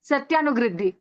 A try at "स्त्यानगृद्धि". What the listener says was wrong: सत्या नहीं, त्यान गृद्धि। आधा स है, आधा त है, त्यान गृद्धि। स्त। सत्य नहीं है, सत्य नहीं, त्यान गद्दी, हाँ।